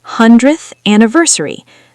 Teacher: The sounds just blend into each other. The h connects right to the a.